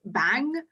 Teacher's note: Like if someone says like here you have bang, you don't want to ease from the B to A because bang, you can see the mouth opens instantly. And only at the end is it kind of easing into the NG sound.